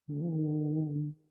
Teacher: La lèvre inférieure se soulève pour aller toucher les dents, les incisives supérieures.